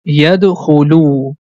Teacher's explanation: Whenever you see a letter has Dhamma on the top, and after that we have letter Waw with Sukoon sign, so we have to stretch the Dhamma sound for two count. That's why this syllable becomes Lu. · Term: long sound